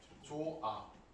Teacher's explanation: 모음이라는 환경이 왔을 때는 어떻게 된다? 히읗이 없어져요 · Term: 히읗 탈락